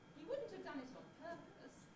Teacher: starts level and then switches to a fall.